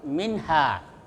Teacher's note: Wala tuqbalu minha, ya, minha itu izhar halqi, ya, nun sukun ketemu ha, itu izhar, dibaca jelas tanpa dengung